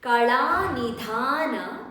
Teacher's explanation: So here la, the tongue tip has to touch upper palate of your mouth, and nidhana, dha needs to be stressed.